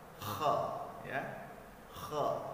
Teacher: pada saat kha-nya berbaris fathah dibaca menebal ataupun tebal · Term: kha tebal